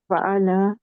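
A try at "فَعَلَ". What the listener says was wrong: ऐसा है कि आप ना आखिरी हरूफ को लंबा मत खींचे, ठीक है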